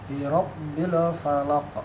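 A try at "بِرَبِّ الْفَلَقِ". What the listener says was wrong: Birabbil. Tadi tuh le-nya sebenarnya. Yang kedua hilang.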